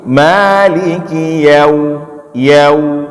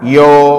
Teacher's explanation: Jadi harus jelas ya dulu baru waw. Yau, bukan yo.